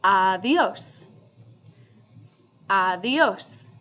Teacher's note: If you notice in Spanish, when a D is sandwiched in between two vowels, it becomes less of a D sound and it becomes V almost like a voiced TH sound.